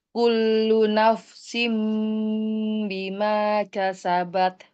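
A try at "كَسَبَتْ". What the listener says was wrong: K-nya itu jangan dilambatin. Kasabat.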